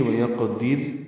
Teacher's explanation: وَيَقْدِرْ میں قاف ساکن پہ قلقلہ ہے